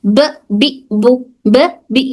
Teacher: बा हमारे होंठों के, दोनों होंठों के गीले वाले हिस्से से अदा होता है